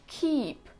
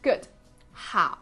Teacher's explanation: you are using the back end of your tongue like the root of your tongue to pronounce these